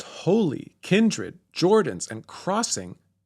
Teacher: But I want to focus on the two-syllable words, where there is usually a syllable which should be accented in spoken English. The words holy, kindred, Jordans, and crossing should all stress the first syllable of the word.